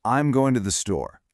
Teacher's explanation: See how your voice drops on store. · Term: downward intonation